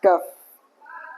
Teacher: huruf kaf yaitu tengah lidah menempel ke langit-langit bagian atas.